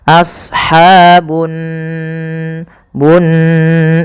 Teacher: Di sini ada gunnah. Pada lafal nun, cara membacanya yaitu ditahan suara nunnya. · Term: ghunah